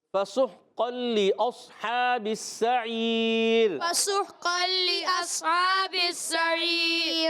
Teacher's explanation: تنوین کو لام سے ملائیں گے. جب قاف پر 2 زبر کی تنوین ہے، لام سے ملے گی تو قاعدہ ہو جائے گا ادغام بلا غنہ